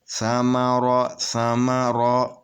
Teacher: یہ تینوں حروف برابر پڑھے جائیں گے، اس کو کسی کو بھی کھینچ کر نہیں پڑھنا۔